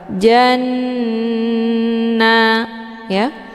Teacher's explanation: jimnya dileburkan ke dalam huruf nun dengan cara ditekan kemudian ditahan lebih kurang 2 kali ketukan. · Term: ghunnah musyaddadah